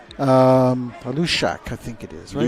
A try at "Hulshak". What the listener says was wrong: She pronounces the H.